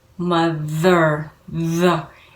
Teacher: It's exactly the same th sound, but you add voice to it. You add some vibration in the vocal cords. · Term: voiced TH